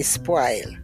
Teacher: we do not use the rounded vowels in Jamaica they're all broad a vowels